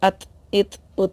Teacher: आवाज़ थोड़ी सी दांतों से टकरा के हल्की सी आ रही है